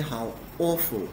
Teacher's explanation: you'll notice that the intonation goes up when I say awful.